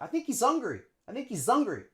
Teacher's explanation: we just link the S onto the vowel in hungry, the U sound